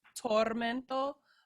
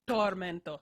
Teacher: in English, we like to aspirate our T's, so they have a lot of air behind them. So in Italian, there's none of that.